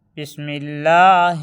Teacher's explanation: لفظ اللہ کے لام سے پہلے زیر آئے تو لفظ اللہ کے لام کو باریک پڑھیں گے